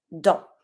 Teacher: If you want to say in, you're going to say dans. Don't pronounce the S.